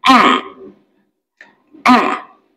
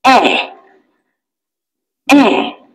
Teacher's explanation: Sự khác nhau giữa âm a và âm e đó chính là ở vị trí của miệng. Đối với âm a là âm kết hợp giữa âm a và âm e, vị trí của miệng sẽ rộng hơn và cao hơn đối với âm e.